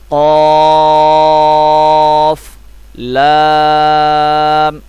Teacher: قاف قلقلہ ہے، یہ گلے سے ادا ہوگا، پر پڑھا جائے گا۔